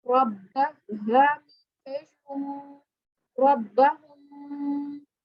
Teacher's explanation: شد ہے تو شد والے حرف کو ہم نے 2 مرتبہ پڑھنا ہوتا ہے